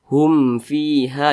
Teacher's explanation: Jadi kalau membaca Al-Qur'an berjumpa dengan huruf mim sukun, setelah mim sukun itu bukan huruf ba, bukan huruf mim, maka semua hukumnya namanya izhar syafawi. Karena dia izhar dibaca jelas, tidak berdengung, jadi pendek saja.